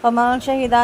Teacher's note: نون ساکن کے بعد شین ہے، باریک اخفا کریں گے